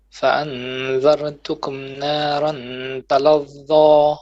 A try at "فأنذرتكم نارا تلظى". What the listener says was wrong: So فأنذرتكم, ra more heavy, but don't bounce it. فأنذرتكم نارا تلظى.